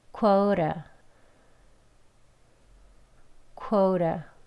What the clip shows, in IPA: ˈkwoʊ.tə